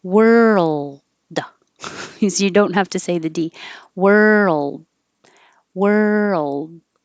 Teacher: When your tongue comes back for the R, you pull it forward for the L and hold it in the L position for a little longer duration so you can hear the L before you make the D